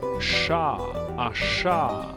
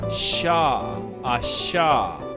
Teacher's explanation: The letter on the left makes the same sound as the SH sound in English, as in champagne, sugar, and delicious, whereas the letter on the right makes a wider SH sound.